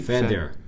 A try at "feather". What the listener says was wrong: But you still are saying the th. Feth. Feather.